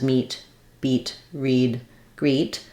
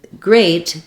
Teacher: Here we have the E vowel, same as meet, beat, read, greet. But in great, the EA says the A diphthong.